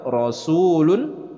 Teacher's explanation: Nah, di sini ada lafaz rasulun, rasul dibaca panjang. Ini adalah waw sukun sebelumnya berharokat dhammah, itu adalah mad tabi'i dibacanya dua harokat.